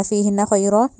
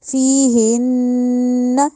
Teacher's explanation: اور ہن میں یہاں پہ جو نون ہے اس پہ شد ہے، اور یہاں پہ ہم نے غنہ کرنا ہے، ایسے نہیں پڑھنا فیہن خیرات، نہیں، فیہن اس طرح، ٹھیک ہے، غنہ کر کے پھر آگے جائیں گے۔